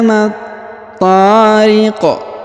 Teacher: Kemudian huruf qaf kita pantulkan atau kita qalqalahkan.